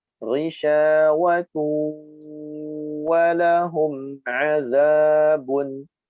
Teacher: Ghisyawatu, mengikuti makhraj huruf waw, dua bibir kita harus berbentuk monyong.